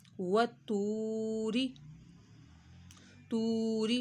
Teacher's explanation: واو ساکن سے پہلے پیش آ رہی ہو تو ایک الف کے برابر کھینچا